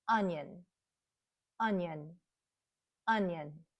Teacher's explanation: We reduce that second syllable because it's unstressed. So the schwa sound is very light and quick. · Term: schah sound